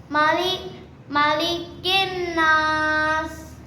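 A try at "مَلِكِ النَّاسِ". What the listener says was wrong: मालिकिन नास। अब किन नास पढ़ देते ना, किन ऐसे लॉन्ग नहीं करते। मालिकिन नास।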